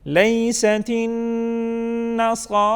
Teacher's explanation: لیست النصارى، نون مشدد ہے، نون مشدد پر قاعدہ اور قانون یہ ہے کہ یہاں پر ہم غنہ کرتے ہیں، آواز کو ناک میں لے کے جاتے ہیں اور ایک الف کے برابر ناک میں آواز کو ٹھہراتے ہیں